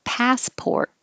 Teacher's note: the stressed syllable pass is ah so open and keep your lips back passport and the port you have to round your lips so